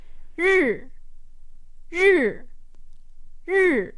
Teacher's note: Your tongue is flat, it's not touching the top or the bottom of your mouth. Your teeth are a little bit gritted and you're making this sound with the the vibration of air in your mouth. It's not coming from your vocal cords or anything like that.